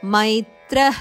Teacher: ತ್ರದ ನಂತರ ಬರುವ ವಿಸರ್ಗ ಬ್ರಾಕೆಟ್ ಅಲ್ಲಿ ಕೊಟ್ಟಿದ್ದಾರೆ ಖದಂತೆ ಕೇಳಿಸಬೇಕು